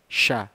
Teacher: bunyi yang bersamaan dengan tersebarnya angin kuat yang keluar dari mulut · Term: tafasyi